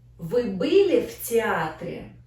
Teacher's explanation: We don't emphasize or stress any word in this sentence. We just have stress in our syllable, театре. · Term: neutral question